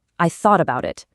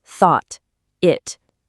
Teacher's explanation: And in it, I'm not releasing a puff of air. My tongue goes to the roof of my mouth like it's going to make the T sound, but it just stops there.